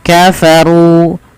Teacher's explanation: dibaca dengan tebal dan di sini ada Ro tafkim karena ro berharakat damah